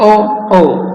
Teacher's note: कंठोष्ठ जिनका उच्चारण कंठ और ओष्ठ से होता है, अर्थात ओ। दंतोष्ठ जिनका उच्चारण दंत और ओठ से होता है अर्थात व।